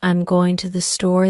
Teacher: the emphasis falls on going and store not I'm or to